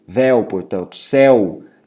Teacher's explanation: Assim também como os monossílabos que finalizam em ditongo aberto, ditongo oral aberto, que seria justamente essa pronúncia mais aberta do E ou do O